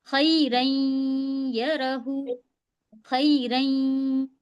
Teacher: नून की आवाज को हम नाक में आवाज रोक रहे हैं, खैरन यरहु, ये होता है गुन्ना के साथ मिलाना।